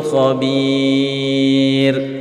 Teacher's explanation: Nah, ra sukun apabila huruf sebelumnya berupa ya sukun, ya. Apabila huruf sebelumnya berupa ya sukun, ingat maka ra-nya dibaca tipis ketika diwaqaf atau disukun.